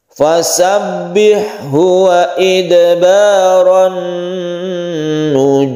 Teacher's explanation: tasydid nun ini kita dengungkan karena dia itu al bertemu nun kemudian membentuk tasydid. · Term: gunnah